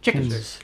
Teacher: says the word chickens like a spondee.